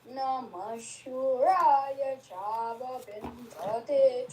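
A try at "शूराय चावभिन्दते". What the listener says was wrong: Chava, Udata both. Va is not Anudata. Namah Shuraya Chavabhindate.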